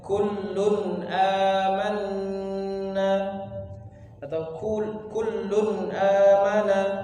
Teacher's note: Itu apabila izhar halqi yang pertama, apabila nun sukun atau tanwin bertemu dengan salah satu huruf yang 6 itu, yaitu hamzah, ha, ain, ha, ghain dan kha. Maka huruf nun sukun dan atau tanwin itu dibaca jelas, dia tidak dipanjangkan. Contoh pada kata misalkan kullun amanna atau kullun amana, ya, dikata lun dan a, ya.